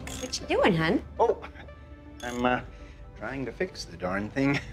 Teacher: Euro-immigrant-influenced accent that has like those long O's, those flat A's, that very like Fargo accent that we're thinking of, and that's like that's what's in our heads as the Minnesota accent.